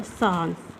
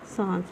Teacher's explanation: जब हम सांस का उच्चारण करते हैं, तो ध्वनि नाक और मुख दोनों से निकलती है। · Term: अनुनासिक स्वरयुक्त शब्द